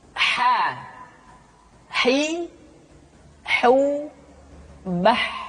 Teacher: huruf ha dikeluarkan dari tengah-tengah tenggorokan tengah-tengah tenggorokan ha hi hu Bah kesalahan yang paling sering ketika